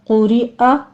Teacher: قوف کو پر پڑھنا ہے، اوپر ضمہ ہے، را باریک پڑھی جائے گی۔ قُرِئَ حمزہ کی آواز ہے، فتح کے ساتھ آپ نے پڑھنا ہے۔